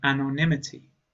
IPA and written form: ˌæn.ɒnˈɪm.ə.ti (Anonymity)